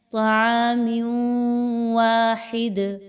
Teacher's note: میم کے نیچے 2 زیر کی تنوین کے بعد واو کا حرف آ رہا ہے، تنوین کے بعد واو کا حرف کا آ جانا ادغام کریں گے ود غنہ، یعنی یہاں پہ آپ نے تنوین کی آواز کے بعد جب واو کی آواز نکالنی ہے تو غنہ کرتے ہوئے پڑھنا ہے